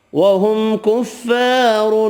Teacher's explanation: میم کا اظہار ہوگا، الف مدہ ایک الف کی مقدار میں کھینچ کر پڑھیں گے۔ را دو پیش کی وجہ سے پر پڑھیں گے، تنوین کا اظہار بھی ہوگا۔